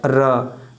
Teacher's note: जब हम र का उच्चारण करते हैं तो जीभ मूर्धा को स्पर्श करती है